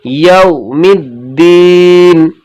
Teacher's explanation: واو ساکن سے پہلے زبر ہو تو نرم آواز کے ساتھ جلدی پڑھنا ہے، کھینچنا نہیں ہے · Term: واو لین